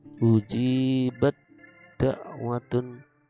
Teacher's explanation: tak sukun bertemu dengan dal. Nah, seolah-olah tak ini juga hilang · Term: idgham mutajanisain